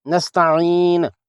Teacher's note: یہاں سین کو خصوصی توجہ سے باریک پڑھنا ہے تاکہ صاد سے الگ تلفظ ہو سکے۔ وقفاً یہاں بھی مد عارض وقفی ہوگی اور وقف بالاسکان ہوگا، اور وصلاً عین کی زیر اور یائے ساکنہ سے بننے والے یائے مدہ پر مد اصلی 2 حرکات والی ہوگی۔